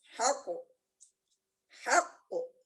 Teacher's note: Ha, dia memang turun karena dia istifal. Qaf naik karena memang isti'la.